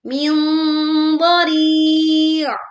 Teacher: menyamarkan bunyi sengaunya dengan tebal